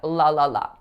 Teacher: So I know that in most languages, the letter L represents a light L in which the tip of your tongue comes up to your alveolar ridge, like when I'm saying la la la.